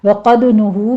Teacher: نون کے اوپر ضمہ ہے، ہونٹ گول کر لیجئے، آگے واو مدہ ہے